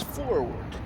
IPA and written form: ˈfɔɹ.wɚd (forward)